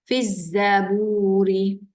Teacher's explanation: Itu dia hukum alif lam syamsiah. Lam tak ada tanda, kita bunyikan huruf zai. Fiz masuk telah bunyi lam tu dah masuk kepada zai.